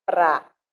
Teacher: A sílaba pra, acentuada, que é a sílaba mais forte da palavra prática, está exatamente na sétima sílaba da linha do verso.